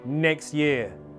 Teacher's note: with elision, you also have the option to elide that t sound.